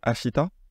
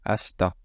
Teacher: on ne prononce pas le i mais le rythme reste le même